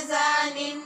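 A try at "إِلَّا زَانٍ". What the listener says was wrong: आपका मखरज ज़ा का ठीक नहीं हो रहा, इल्ला ज़ानिन,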